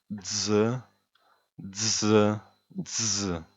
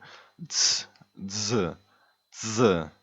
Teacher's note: It's like a D and a S, very, very attached together.